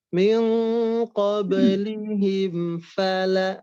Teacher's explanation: min qablihim, mimnya pastikan tidak terlalu lama ya, langsung ke fa-nya